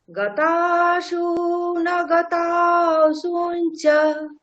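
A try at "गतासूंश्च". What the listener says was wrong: আচ্ছা, ওখানে তালব্যটা আপনি স্কিপ করছেন, তাহলে উচ্চারণটা হবে কেমন? সুমশ্চ। ইয়েস, গতাসু না গতাসুমশ্চ। সুমশ্চ। ইয়েস, সুমশ্চ। তালব্যটাকে স্কিপ করা যাবে না।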